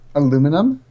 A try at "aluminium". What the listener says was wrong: wrong. There's an A. No, we actually pronounce all of the letters. You miss letters out for some stupid reason.